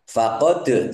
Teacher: dal sukun bacaan qalqalah dibaca memantul ditampakkan pantulannya